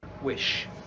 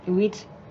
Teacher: she is changing the middle vowel, the I, to E. So a short I to a long E.